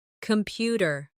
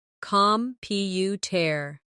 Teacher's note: The stress is on the second syllable, computer. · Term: word stress